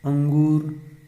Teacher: ध्वनि केवल नाक से निकलती है इसमें केवल नाक से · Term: अनुस्वार